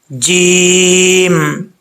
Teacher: جیم کا مخرج زبان کا جو درمیان ہے اوپر والے تالو سے لگے تو جیم پڑھا جاتا ہے